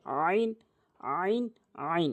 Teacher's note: আইন হলকের মাঝখান থেকে চাপ দিয়ে